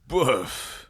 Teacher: It's not actually a word. It's more like a guttural sound. Place it in the back of your throat.